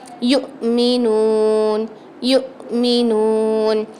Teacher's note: یؤمنون میں الف کے حمزہ کے اوپر جزم آ رہا ہے تو یہاں پر ہم جھٹکا دے کے پڑھیں گے۔ حمزہ یا الف ان دونوں کے اوپر جب بھی جزم آتا ہے آپ نے وہاں پر کیا کرنا ہے، جھٹکا دے کے پڑھنا ہے۔